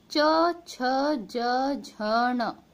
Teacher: ये इनकी ध्वनि तालव्य होती है, यानी कि तालु से निकलती है, और इसे हम चा वर्ग भी कहते हैं।